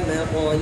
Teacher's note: دوسرا اختلاف مطلع لام کے کسرے کے ساتھ ہے، یہ بھی دونوں راویوں کے لیے